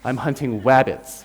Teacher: instead of an R like an American r he pronounces a w